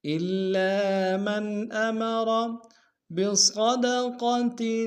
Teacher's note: صاد کو موٹا ادا کریں گے، قاف کو موٹا ادا کریں گے